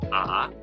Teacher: So ah, right? It goes from a little bit low to kind of your higher end. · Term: The second tone